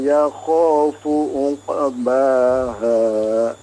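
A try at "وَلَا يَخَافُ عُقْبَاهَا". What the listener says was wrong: Afwan, diperjelas ainnya.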